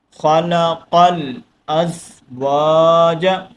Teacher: الف مدہ ایک الف کی لمٹ کے اندر کھینچ کر پڑھیں گے